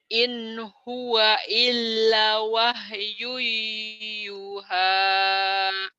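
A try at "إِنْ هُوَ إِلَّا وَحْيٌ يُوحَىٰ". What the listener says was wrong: terburu-buru. In huwa illa wahyu yuha. In huwa illa wahyu yuha.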